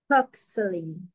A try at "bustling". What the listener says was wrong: Bus. No, like you take a bus, train, taxi, bus. Bustling. B more B sound, not P, like baby and not paper. Baby. B. B. B. Bustling.